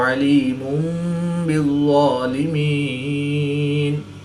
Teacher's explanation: 2 پیش کی تنوین کے بعد حرف با ہے تو یہاں پر اقلاب ہوگا. 2 پیش کی تنوین کو میم سے بدل کر غنہ زمانی کر کے پڑھیں گے